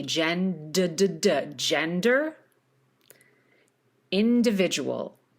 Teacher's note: You can hear I'm really popping the D.